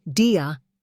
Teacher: D before I sounds like J, e.g. dia equals gia.